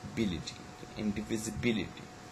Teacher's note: the primary stress is um basically the fifth syllable